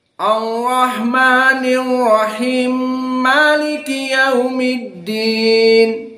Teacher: qiraah As-Susi an Abi Amr, di mana dia menyambungkan Ar-Rahmani Ar-Rahim diidghamkan dan Maliki disambungkan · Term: idgham al-kabir